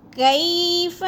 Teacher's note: یلین کو ہم نے لمبا بھی نہیں کرنا اور جھٹکا بھی نہیں دینا